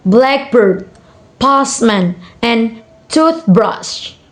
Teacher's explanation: compound noun are usually stressed on the first part.